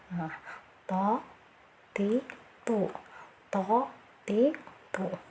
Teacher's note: Dia mahrosnya dari ujung lidah bertemu dengan pangkal dua gigi seri atas ya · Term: huruf to